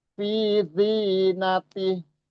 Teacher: jadi huruf H-nya kita matikan atau kita sukunkan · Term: wakof